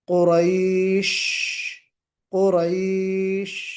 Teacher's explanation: आपकी आवाज अपने मखरज में, शीन के मखरज में बिल्कुल फैल कर निकले। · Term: तफशी